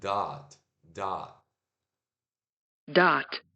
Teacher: Vai parecer que você está fazendo um som de O, mas não é O, é A.